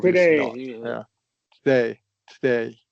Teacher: It should be a schwah and then that second vowel should be held out longer. So there's definitely a disparity in the length of vow duration that we articulate.